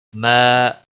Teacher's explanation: الف مدہ ہے، 1 الف کے برابر کھینچ کر پڑھیں گے